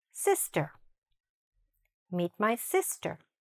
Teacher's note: The stress is in the beginning and the i is very short.